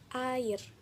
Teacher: termasuk vokal rendah atau vokal pusat rendah yang tak bundar